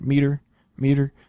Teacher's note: you have the E uh gets the stress in meter which is the first syllable